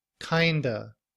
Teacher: in reduced form, we don't pronounce the V at the end of of. We just used the schwa sound. Uh, kind remains the same, but we blend the sounds together to produce kind of.